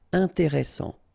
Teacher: S, strong, and it opens the pronunciation of your E.